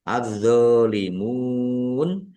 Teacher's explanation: alif lam samsiah, karena tidak dibaca, langsung masuk ke huruf berikutnya, yaitu dha, ditandai dha-nya ada tasdidnya.